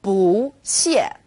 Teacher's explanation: When used on its own, 不 is fourth tone, 不. When 不 is used before another fourth tone, it becomes second tone